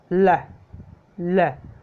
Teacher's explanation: जैसे आप एल को बोल के देखिए, ल ल, जीभ ऊपर टच हो जाती है और बिल्कुल जगह नहीं बचती आगे से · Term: लेटरल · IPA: l